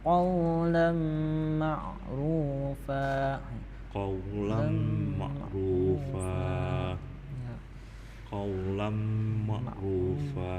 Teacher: Jadi huruf qa nih membacanya sedikit di tenggorokan.